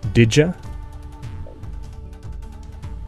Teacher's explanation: As a simple example, the y sound in you is fortified to an affricate j in the colloquial pronunciation of did you as did ya.